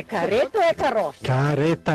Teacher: no interior do Rio Grande do Sul o r fica mais fraco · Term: R fraco